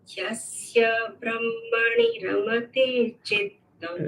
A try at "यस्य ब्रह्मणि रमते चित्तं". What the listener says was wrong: A little emphasis on the ha. Brahmani.